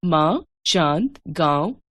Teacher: इनके उच्चारण में वायु मुंह और नाक दोनों मार्गों से बाहर निकलती है। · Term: अनुनासिक